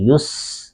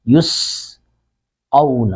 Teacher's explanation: یا پیش سین یس، یہ سین پر سیٹی کی آواز آئے گی۔ دانتوں کو جوڑ کر آپ زبان کی نوک اس کے ساتھ ملے گی، سختی سے ادا کریں گے تو سین پر سیٹی کی آواز آئے گی۔